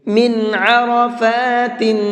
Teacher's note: اس نون کو بھی جلدی پڑھیں گے، ظاہر کر کے پڑھیں گے، صاف صاف پڑھیں گے، غنہ اخفا یہاں بھی نہیں کریں گے۔ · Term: اظہار